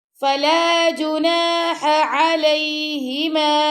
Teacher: آپ یہ کریں گے فوراً ہا کے بعد عین کی آواز آئے گی۔